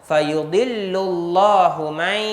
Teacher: idgham ma'al gunnah, dengung 2 harakat